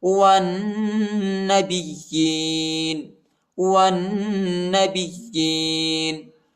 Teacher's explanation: یا پر جو ہے شد آیا ہے اور کڑی زیر بھی آیا ہے، اس کو ایک الف کی مقدار تک کھینچیں گے